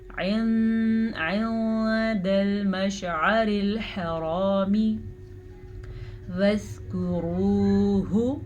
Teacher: را کو پر پڑھیں، را پہ پیش ہے اور واو مدہ کو ادا کریں. · عین کو واضح کریں، حا کو بھی واضح کریں اور را کو پر کریں